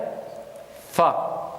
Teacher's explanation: Et centrale, incisive centrale, d'accord, supérieure, forme le point d'articulation de fa. Donc la pointe des incisives, on va les appuyer sur la lèvre inférieure à l'intérieur et on va sortir le fa.